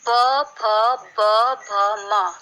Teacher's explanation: ओष्ठ्य उ, पवर्ग प, फ, ब, भ, म आदि ओठ से बोले जाते हैं, इसलिए इन्हें ओष्ठ्य कहते हैं